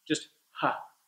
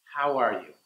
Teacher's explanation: Just relax the jaw. There's nothing going on in the vocal cords. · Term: H sound